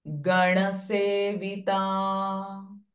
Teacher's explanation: This is not na, but nasalized na. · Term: nasalized nakara